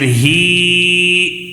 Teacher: کیونکہ ہم نے پہلے سبق میں ہم نے پڑھے تھے کھڑا زبر کھڑی زیر الٹا پیش جب ہو جائے تو اس کو تھوڑا سا کھینچ کر پڑھنا ہے، تو اس کی وجہ سے ہم یہاں پہ ہی کو کھڑی زیر ہونے کی وجہ سے تھوڑا سا ایک الف کھینچ کر پڑھ رہے ہیں